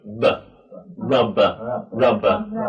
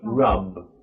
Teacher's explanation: So at the beginning of these words, usually we really we let our mouth open a lot. But when it's at the end of the word, we just like you pop a little, just let the air out a little bit. It's much more explosive at the beginning and just a little at the end.